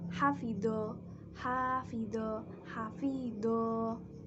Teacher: fathah diikuti alif dibaca panjang satu alif atau dua harokat